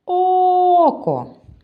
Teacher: буде також 2 якщо поділити його на склади буде о А на який звук падає наголос око вірно на перший о